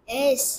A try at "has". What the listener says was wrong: এজ না তো হ্যাজ হ্যাজ